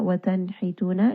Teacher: nun has a idhar because it is followed by one of the throat letters